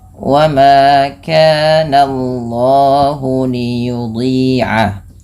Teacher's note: jangan menebalkan bunyi suara na-nya, tapi ditebalkan bunyi Allahnya, sehingga na-nya tipis, Allahnya tebal.